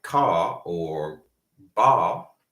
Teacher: if it's in the end, like ka or ba, they won't pronounce the R. It will be non-rhotic.